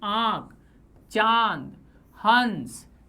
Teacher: अनुनासिक, जिसे सामान्य आम भाषा में कहते हैं चंद्र बिंदु, वे स्वर ध्वनियां जिनके उच्चारण में हवा मुख के साथ नाक से भी निकलती है।